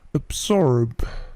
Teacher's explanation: Perhatikan bunyi B-nya itu memantul sedikit. Absorb. Bunyi B ini biasanya memantul jika dia berdiri sendiri.